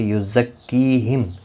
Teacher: کی یا مدہ ہے، ایک الف کی مقدار کے برابر کھینچ کر پڑھیں گے اور میم ساکن پڑھا جائے گا۔